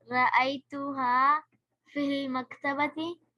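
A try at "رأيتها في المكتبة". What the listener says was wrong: Very good, excellent, आगे।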